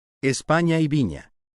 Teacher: Aquí algunos ejemplos de palabras del español actual que tienen el fonema palatal nasal sonoro derivado de los subtipos ya presentados.